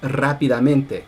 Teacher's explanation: there's main stress on the first syllable and on the ME syllable, even though it's part of the same word